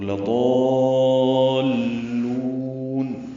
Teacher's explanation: لام کو جلدی پڑھنا ہے، لام کو لمبا نہیں کرنا، اور ضاد کو لمبا کرنا ہے ، یہ مد لازم ہے، کلمی ہے، مثقل ہے، مد لازم · مد لازم ہے، کلمی ہے، مثقل ہے، مد لازم کلمی مثقل، لضالون لمبا کر کے ضاد کو لام سے ملائیں گے، لام پہ آواز کو روکیں گے ، مشدد ہے لام اس لیے، اور پھر لام کو لمبا